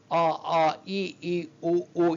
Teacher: ಇಲ್ಲೆಲ್ಲೂ ಕೂಡ ನಾಲಿಗೆ ಆಗಲಿ ಅಥವಾ ಹಲ್ಲು ಇದು ಯಾವುದರ ಸ್ಪರ್ಶನು ಇಲ್ಲ ಅ ಆ ಈ ಈ ಉಲ್ಲದು ಕೂಡ ಮೂಲ ಗಂಟಲಿನಿಂದಾನೆ ಬರ್ತಾ ಇರತಕ್ಕಂತಹ ಸ್ವರಗಳು